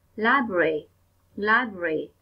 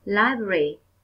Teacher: Đây là một từ có 3 âm tiết và em nhấn mạnh vào âm tiết đầu tiên. Em nói to hơn, rõ hơn và dài hơn.